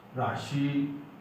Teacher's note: श तालु में जाकर जीभ टकराना चाहिए